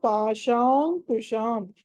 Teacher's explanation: ష తర్వాత మళ్ళీ అనుస్వారం ఉంది తర్వాత కు ఉంది కాబట్టి ష తర్వాత ఆ అనుస్వారాన్ని పంచమాక్షరం చేయాలి క వర్గంలో